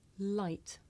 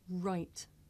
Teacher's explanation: I make the Le sound with the front part of my tongue behind my teeth and I make the r sound by making my lips come out and pulling my tongue back